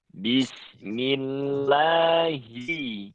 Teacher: ketika hi dan ni itu tidak boleh sampai bunyinya itu miring atau condong ke bunyi ha. Tidak boleh he atau tapi hi-nya itu harus diperjelas lagi.